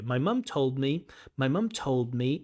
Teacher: Notice that D has disappeared. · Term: accommodation